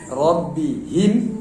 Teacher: Jadi ha biasa, ha yang di ujung tenggorokan ya. Ujung tenggorokan, bukan pangkal tenggorokan, yang di ujung tenggorokan.